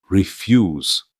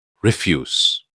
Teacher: With the stress on the second syllable means to decline. But refuse with the stress on the first syllable means garbage.